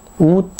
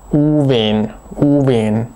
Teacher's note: ein langes U am Anfang statt W